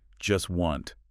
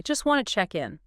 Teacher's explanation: the speaker doesn't pronounce the T sound in either word. Not in just and not in wanted. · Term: consonant reduction